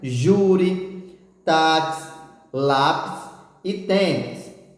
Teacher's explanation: uma palavra em que a penúltima sílaba é mais forte, ou seja, que você colocou mais força para ler ou para falar, e ela for terminada em I ou terminada em is, certo?